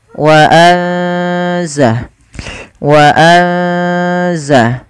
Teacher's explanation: ikhfa itu membaca di antara keduanya yaitu dia menyamarkan saja menyamarkan suaranya kepada huruf Zai Waza Waza wa kami ulangi wa sambil ditahan dua harakata Kemudian